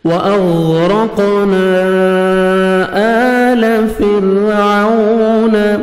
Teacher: الف مدہ کے بعد نیکسٹ کلمہ کی سٹارٹنگ میں حمزہ ہے تو مد جائز, اس کو آپ نے 3 سے 4 سیکنڈ ایکسٹرا آپ نے مد کرنی ہے.